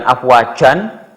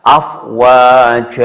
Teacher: Jadi n-nya dihilangkan saja. Yang lebih indah adalah n-nya dihilangkan.